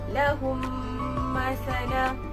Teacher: Kat sini murid-murid perlu memasukkan huruf mim yang pertama ke dalam huruf mim yang kedua beserta dengung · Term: idgham mislain